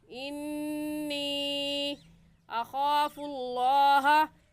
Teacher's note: اس مد کا نام ہے مد منفصل اور مد جائز، اور اس کو ہم 3 الف کی مقدار کھینچیں گے کیونکہ حروف مدہ کے بعد حمزہ اگلے کلمے میں ہے۔ · نون مشدد آ گیا ہے اور نون مشدد پر ہمیشہ غنہ ہوتا ہے